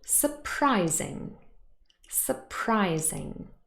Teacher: the word consists of three syllables now but the stress has not changed it's still in the middle here on pry